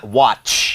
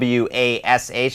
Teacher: ถ้ามันเป็นตัวสะกดนะครับก็จะได้ยินการหยุดที่ตัวTก่อนนะครับ เป็นWhatนะฮะมันจะอยู่ที่Tแป๊บนึงแล้วก็อ่าต่อไปที่นะฮะWhatนะฮะWatchในขณะที่คำว่าล้างนะฮะเมื่อกี้เป็นดูนะครับถ้าเป็นล้างนะครับwashนะครับจะเป็นWashนะฮะไม่มีการหยุดที่ตัวตัวTนะครับตัวทนะครับจะเป็นwasเข้าสู่เสียงไปเลยนะซึ่งเป็นเสียงที่ลากยาวได้แต่ว่าเสียงแรกนี่จะ